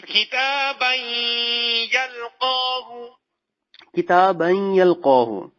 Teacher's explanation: تنوین کے بعد جو ہے وہ حروف یرملون میں سے یا آ گیا، اب جو ہے یہاں پر ادغام یرملون غننے کے ساتھ ہوگا